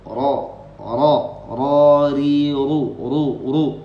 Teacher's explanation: Ujung lidah menggeser sedikit ke dalam dari makhrajnya nun. · Jadi ngucapin ro, maka si ujung lidahnya itu dirapatkan ke dalam. Ini namanya makhrajnya dhahrur ra'sil lisan, makhraj ke-11.